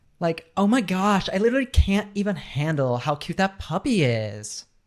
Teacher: there's a lot of upward intonation so so a lot of times when you're talking to someone who's from the LA area you're not sure if they're asking you a question